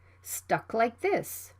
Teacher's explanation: the k sound is right before the consonant th it can also be unreleased